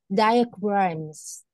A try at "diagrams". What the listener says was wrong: Rồi, lưu ý ha, chỗ đó đọc là die không đi nha. Diagrams. Diagrams. Diagrams. Diagrams.